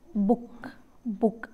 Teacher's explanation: the back of the tongue is raised to position just about half close · the lips are closely rounded